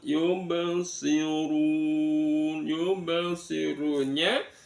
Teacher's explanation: Di sana ada ba mati terletak di tengah-tengah kalimat, namanya bacaan qalqalah sughra